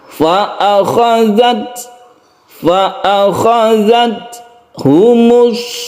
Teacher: ketika kita mensukun ta, kita menghembuskan nafas sedikit ya, sehingga timbullah suara s, tapi sedikit saja. Itulah sifat hamas atau mahmus dari ta ya.